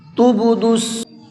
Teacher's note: اس با کے اندر ہلکا سا قلقلہ کریں گے، یعنی کہ آواز کو ڈبل کر کے پڑھیں گے۔ تب، یہ جو لاسٹ میں آواز نکل رہی ہے یہ قلقلے کی آواز ہوتی ہے، اس طرح سے پڑھنا ہے ہلکا سا۔